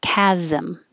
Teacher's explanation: that transition from the z to the m sound requires a little vowel